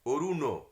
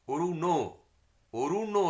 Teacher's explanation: আর মূর্ধন্য নয়ের যে উচ্চারণগুলো, এই যে অরুণ, মূর্ধন্য বলতে গেলে আমাদের জিভটা একটু উল্টো হয়ে মূর্ধায় চলে যায়